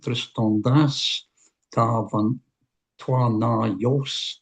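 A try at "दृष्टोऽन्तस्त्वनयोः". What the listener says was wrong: just run all together. Just the ones that I've highlighted. Drishtontas twanayos. Drishtontastu. Just say drishtontastu.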